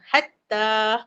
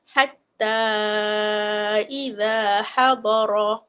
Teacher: Ha kita panjangkan. Biasanya ustazah biasa empat harakatlah. Ha panjang lebih sikit daripada dua harakat. Ha dua jadi empat.